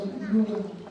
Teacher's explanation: The letter B is pronounced with an M sound before the B sound, like in bamboo.